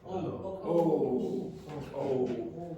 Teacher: Yeah, it's rounded, okay, so your lips are rounded here, and it's a back vowel, it's at the back of your mouth